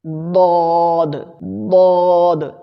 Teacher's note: اس کا مخرج ہے زبان کی کروٹ، یہ زبان کی کروٹ ہے، تو زبان کی کروٹ اور اوپر کی داڑھوں کی جڑ سے ملا کر اسے ادا کریں گے، ضاد ضاد، اسے موٹا ادا کرنا ہے۔